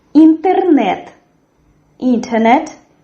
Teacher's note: The stress in this word falls on the third syllable. And as well we have here the sound which is like tigers do but not like in English.